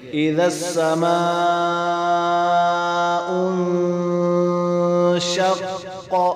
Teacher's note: قاف حروف قلقلہ میں سے ہے، جوڑ میں ساکن تھا تو اس لیے قلقلہ گیا